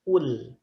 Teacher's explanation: Kalau lam itu kan tipis. Lam dalam keadaan tipis, sukun dalam keadaan tipis, cara membacanya dengan ditarik.